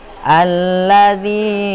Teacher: dza berharokat kasroh bertemu dengan iya sukun, cara bacanya panjang 2 harkat. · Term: mat tabi'i